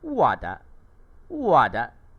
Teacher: Da adalah nada neutral dan tiada tanda nada. Bunyinya adalah pendek dan lembut